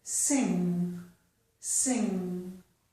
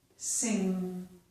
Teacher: We don't have a hard G. This isn't G at the end. · It's touching my soft palate, and it stops the air from coming out that way, and the air comes through my nose, okay? So the back of my tongue is touching my soft palate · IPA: / ŋ /